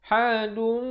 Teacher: Ha pedas makhrajnya di tengah kerongkong ini.